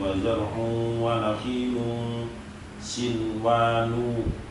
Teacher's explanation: nunnya di lafaz sinwanun harus tetap dibaca idhar, tidak boleh dibaca idgham. Bagi yang belum tahu, biasanya karena di situ ada nun sukun bertemu dengan wawu. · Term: idhar wajib